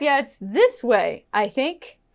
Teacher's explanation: If my intonation goes up, yeah, it's this way, I think. It's kind of like a question. It's showing you that I am unsure.